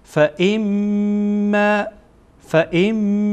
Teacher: جمیعاً فما فما فما فما فما فما اینجا حمزه را با میم وصل می‌کنیم و همراه غنه و غنه همان مخرجی هست یا همان قاعده‌ای هست که وقتی ما به اونجا رسیدیم مثلاً در اینجا میم غنه میشه به این شکل ادا می‌کنیم که صدا را از خیشوم یعنی از استخوان بینی صدا را از بینی خارج می‌کنیم.